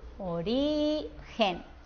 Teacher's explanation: la que suena mejor es la que tiene la sílaba tónica en la penúltima sílaba en la del medio